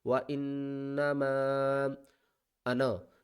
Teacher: یہ چھوٹی مد ہے، اس کو ہم نے 3 الف کی مقدار کھینچ کر پڑھنا ہے